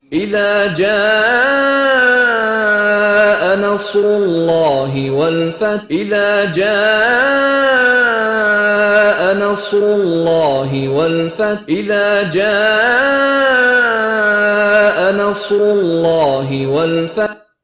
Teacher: Nah, ini adalah bacaan lam tafkhim. Ini ada lafaz Allah, sebelumnya berharokat dhammah. Nah, maka ini harus dibaca tebal atau tafkhim.